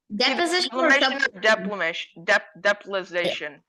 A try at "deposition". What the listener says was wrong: I'm gonna accept that that's close enough it's deposition deposition not deposition there's no l in there